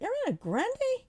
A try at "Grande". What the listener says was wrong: Grande I don't know why you pronounce it Grand